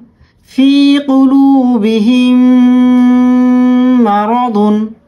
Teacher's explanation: হয় অর্থাৎ এই পাঁচটি হরফের যেকোনো একটি হরফের উপর সাকিন হলে কলকলা করে তথা প্রতিধ্বনি আকারে বা ধাক্কা দিয়ে পড়তে হয় · দুটি মিম কে একসাথে মিলিয়ে গুন্না করে পড়তে হয়